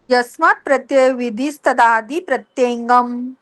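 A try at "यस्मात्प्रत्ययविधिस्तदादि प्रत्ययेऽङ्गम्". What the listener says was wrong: प्रत्ययंगम, आराम से बोलिए, जल्दी मत कीजिए। तो जल्दी करें, आपको सूत्र आता है, लेकिन वो आप इतनी जल्दी में ना बीच में सब वर्ड्स खा जाती है।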